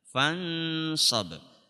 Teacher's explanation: Kalau yang fansab itu bukan fangsob, bukan. Karena huruf sod tempatnya di mulut bagian depan, maka dengungannya pun juga menyesuaikan di mulut bagian depan.